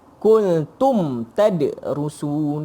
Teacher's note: tak ada dengung, tak ada apa. Dua-dua tu terpisah. Bila tak dengung jelas kita sebut izhar.